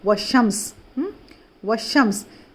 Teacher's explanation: واو کو ڈائریکٹ شین میں ملا دے رہے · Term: حروف شمسی